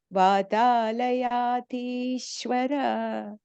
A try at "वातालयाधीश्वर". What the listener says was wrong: The last syllable letter there, Vathalayadhishwara. There's no A there. Okay. So it just ends with a Ra.